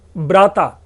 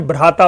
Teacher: केवल अल्प प्राण महाप्राण का अंतर हुआ है।